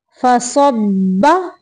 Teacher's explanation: बा मुशद्दद है इसलिए स्वाद को बा से जोर से मिलाएंगे